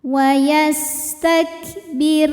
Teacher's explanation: secara tarqik sebab huruf sebelum sebelum Rasul nya ini adalah kasrah maka dibacanya tipis pangkal lidah kita tidak perlu naik